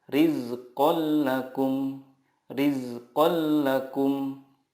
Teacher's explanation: billaghunnah adalah nun sukun atau tanwin bertemu dengan lam atau rol cara membacanya meleburkan nun sukun ke huruf berikutnya tanpa guna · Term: idgham billaghunnah